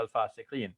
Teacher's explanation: And when I say fasiqeen, notice I'm dropping that last A, because when we're stopping, we're going to drop the last short vowel at the end